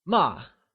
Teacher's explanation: is pronounced using a falling tone can you try and say MA it is said with a · It has a rapidly falling pitch, like while saying a command, kind of like saying stop. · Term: fourth tone